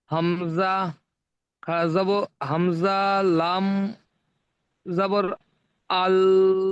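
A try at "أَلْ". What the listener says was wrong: হামজা লাম খাড়া যাবার আ, আটা টান করতে হবে, আল। ওটা তো লাম টান হয়ে যাচ্ছে, লাম টান হবে না। আল, আল,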